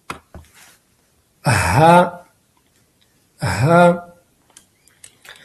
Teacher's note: یہ ادنی حلق سے یعنی حلق کے اوپر حصے سے ادا ہوتا ہے. جہاں پر حلق زبان سے جڑتا ہے وہاں سے یہ ادا ہوتا ہے.